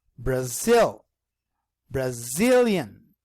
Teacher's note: the second syllable here, sil, is the one that is stressed.